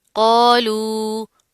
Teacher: قوف موٹا ہے، اس کے ساتھ کا الف بھی موٹا پڑھا جائے گا، مد آ رہی ہے تو اس کو کھینچ کر لمبا کر کے پڑھیں گے